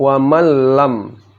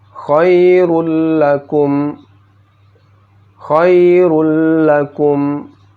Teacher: Ketika memasuki huruf lam, bunyinya menjadi nun mati atau tanwin menghilang. Jadi jika bertemu, oke, nun mati tanwin dengan lam, maka nun mati atau tanwin akan hilang.